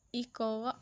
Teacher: قاف کو کیوں ہلایا کہ یہ ہمارا حروف قلقلہ ہے